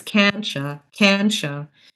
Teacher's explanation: So oftentimes when you see can't and you, it becomes can'tcha, because the t and the y, if you merge them together, it's can'tcha. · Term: assimilation